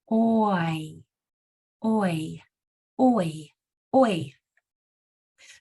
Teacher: it changes sounds from one from the beginning to the end so it slides from one sound to another so the shape of your mouth is going to change from the beginning to the end it's going to start like oh and it's GNA end like · So your mouth changes from O to E, oi. · It's going to start like O, and it's going to end like E. In the middle, it's going to have an I sound in it. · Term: dip thong